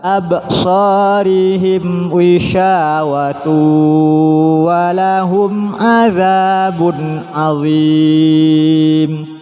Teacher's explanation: Wishawatun bertemu dengan wawu, tanwin bertemu dengan wawu, disebut bacaan idgham bi gunnah.